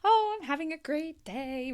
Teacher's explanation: there's kind of that rise throughout your voice that gives the person the impression that you're happy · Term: happiness